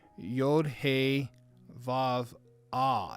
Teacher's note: Now the Yod is Yeh, and the He, the first He, or H in the letter, is going to be a hard H. And then at the end, it's going to be a soft H. So it's going to be Yod, He, Vav, Ah. · It's like almost like a silent Ah, but it's not silent. It is spoken, but it's a soft H.